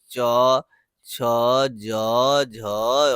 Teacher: च वर्ग के बारे में कहा जाता है तालु से बोला जाता है।